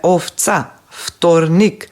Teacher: Се разбира дека во изговорот В во овие ситуации го изговараме како Ф, односно ја изговараме беззвучната, но според правописот пишуваме Ф.